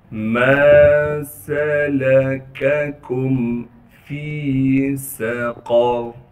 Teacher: ما سلککم فی سقر، فا کو یا مدہ سے ملا دیں گے، یا مدہ ہونے کی وجہ سے فا کو ایک الف کے مقدار کھینچیں گے، سین میں سیٹی ادا کریں گے، قاف کو موٹا کر کے پڑھنا ہے، را بھی موٹا پڑھا جائے گا